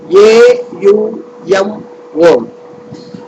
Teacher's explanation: When you pronounce Om, A emerges from the throat, originating in the region of the navel. U grows over the tongue. M ends on the lips.